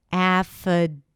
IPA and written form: æfəˈdeɪvɪt (affidavit)